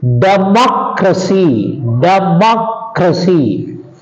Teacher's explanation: stress goes on the anti penultimate syllable that means on the third syllable from the end from the last from the last for example you see democracy